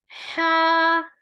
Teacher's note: ہا حلق کے درمیان والے حصے سے ادا ہوتا ہے